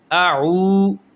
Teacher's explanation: اب یہ واو کے اوپر جزم ہے، جس حرف کے اوپر جزم آ جائے اس حرف کو ساکن کہیں گے۔ واو ساکن سے پہلے پیش آ جائے تو وہ واو مدہ کہلاتا ہے، اس کو ہم ایک الف کے برابر کھینچ کر پڑھیں گے۔